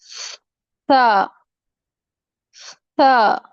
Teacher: زبان کی نوک اور ثنایا علیہ کا اندرونی کنارہ جو کہ مسوڑوں کے قریب ہے. اوپر والے دانتوں کا اندرونی کنارہ.